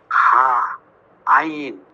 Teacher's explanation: 2 নম্বর মাখরাজ হলকের মধ্যখান হইতে উচ্চারিত হয় হা আইন